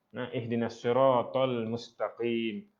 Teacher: qaf di situ dia bukan kaf, tapi dia qaf yang bersifat rendah sebab dia berbaris bawah.